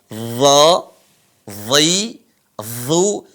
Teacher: Di mana tempat keluar huruf d ujung lisan ketemu dengan ujung gigi seri atas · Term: makhraj D